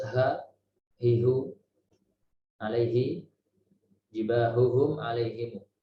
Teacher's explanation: dari tenggorokan bagian bawah, dari tenggorokan paling jauh dari mulut depan atau pangkal tenggorokan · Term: huruf H